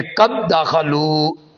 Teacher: دال ساکن جو ہے وہ دال مشدد میں مدغم ہو جائے گا